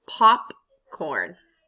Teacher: Which one is louder and longer and stronger? Pop. Popcorn. So it's one.